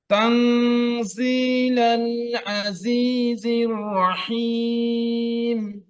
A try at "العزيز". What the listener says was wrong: আইনটা আরেকটু